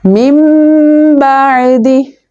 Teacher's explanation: دونوں میم کو ملا کر ایک ساؤنڈ کریٹ ہوگا جو کہ اخفا کا ساؤنڈ ہوگا